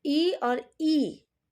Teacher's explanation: जब हम ई और ई का उच्चारण करते हैं तो इसका स्थान तालु में होता है, तालु की मदद से ये वर्ण उच्चारित होते हैं। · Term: तालव्य स्वर